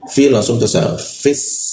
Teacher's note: Fi langsung ke sa. Fis ya, karena rongga udara terbuka lebar maka hembusan sa itu jelas